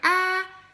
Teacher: so that tells me right there this is a closed syllable so I know it's a closed syllable and my a says ah